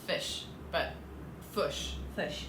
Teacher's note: the short I sound is the most different between the New Zealander and the Australian accents because yours sounds like our schwa. So it's not quite an as in up.